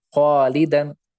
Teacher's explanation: اس طرح خالدن، خالدن میں الف سے پہلے خا ہے، خا پر حرف یا باریک حرف ہے؟ تو خا تو پر حرف ہے تو ہم الف کو بھی خا کے ساتھ پر پڑھیں